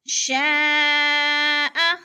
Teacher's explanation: نذیر للبشر، نذیر للبشر، لمن شاء منكم أن يتقدم أو يتأخر، لمن، من پہ نون ساکن اور شین حروف اخفا میں سے آ گیا ہے، اس لیے ہم نے ادھر اخفا کرنا ہے، اور شا پہ مد متصل ہے، حروف مدہ کے بعد حمزہ اسی کلمے میں ہے، مد متصل 4 الفی مد ہے، 4 الف کے برابر ہم نے اس کو کھینچ کر پڑھنا ہے